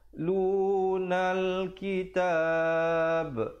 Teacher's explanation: Lunal kitab, dan waqafkan ba-nya walaupun hidup, walaupun berbaris atas, tapi bila kita waqaf dia jadi mati mendatang. Kita berikan tanda sukun mendatang di atas ba dan diberikan pantulan ataupun lantunan. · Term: khalqalah kubra